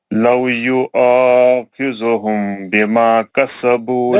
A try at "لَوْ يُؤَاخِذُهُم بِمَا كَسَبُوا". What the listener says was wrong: نہیں, خذو میم کے بعد با ہے, اخفاء شفیع ہوتا, خذوہم بما,